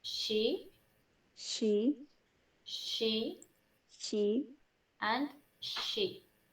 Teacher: the tongue is placed slightly behind the alveolar ridge, pushing air back in the mouth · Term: post-alveolar fricatives